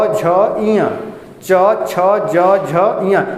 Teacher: च बोलिए चाहे छ बोलिए चाहे ज बोलिए चाहे झ बोलिए चाहे य बोलिए एक ही जगह जबान टच हो रहा है